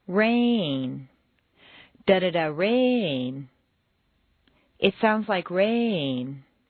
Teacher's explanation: Make rain very musical and put it on two notes. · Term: New information